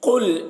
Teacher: कॉफ को पूर पढ़ेंगे, कॉफ रूफ मुस्तालिया में से है